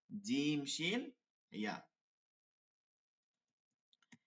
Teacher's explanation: জিহ্বার মধ্যখান তার বরাবর তালুর সঙ্গে লাগাইয়া